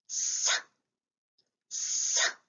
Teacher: We use the front of the tongue against the molar teeth.